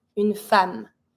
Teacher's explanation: Even if it's an E for femme, a woman, you're going to pronounce it like an A sound.